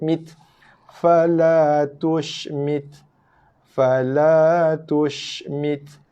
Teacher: Sama macam huruf kaf. Tekan ujung lidah, tekan belakang gigi, keluar hembusan nafas sikit.